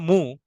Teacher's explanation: কোন লেটারের উপর লাগাই যেমন ধরেন মিম পেশ মুম দম্মা মু তখন দেখেন ঠোঁটটা গোল হয়ে যাচ্ছে ঠোঁটটা জয়েন হয়ে যাচ্ছে দুই ঠোঁট জয়েন হয়ে মু সাউন্ড বের হচ্ছে উ হচ্ছে এই যে দুই ঠোঁট যেহেতু জয়েন হয়ে যাচ্ছে এজন্য